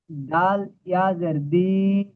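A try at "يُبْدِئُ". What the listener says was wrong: দাল ইয়াজের নয়, দাল জের দি।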